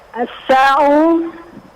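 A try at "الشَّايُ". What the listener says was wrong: Asyayu itu kurang titik di bawahnya.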